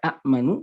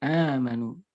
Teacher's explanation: hamzah yang seharusnya ada dihilangkan, kemudian min jinsi disesuaikan dengan jenis dari harokat yang ada sebelumnya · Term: badal